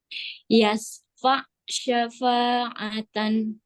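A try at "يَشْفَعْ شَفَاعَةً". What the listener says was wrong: Sudah shin yashfa Ainnya yashfa', alirkan, ditekan terus dialirkan.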